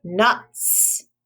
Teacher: it sounds like an s in the word nuts it doesn't make the z sound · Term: suffix s